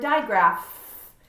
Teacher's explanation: it makes an F sound we don't hear the P we don't hear that H we hear the F sound